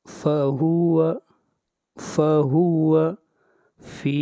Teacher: جب یا ساکن سے پہلے زیر ہو اس وقت یا مدہ ہوتا ہے، اور اس مد کو ایک الف کے برابر کھینچ کر پڑھیں گے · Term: مد اصلی